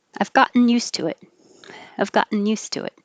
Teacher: Gotten. You don't say the T.